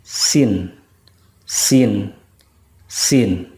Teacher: kalau Sin itu ujung lidah dengan gigi seri yang bawah.